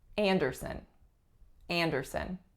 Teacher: The strongest syllable is the first, and the sound on the strongest syllable is a nasalized ah, so it sounds like an.